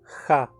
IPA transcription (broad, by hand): xa